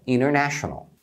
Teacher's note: quando você tem uma palavra que tem o n e o t juntos acaba sendo um pouquinho enrolado de falar por isso que eles omitem